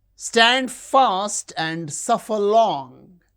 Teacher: Stand fast suffer long. These words are stressed.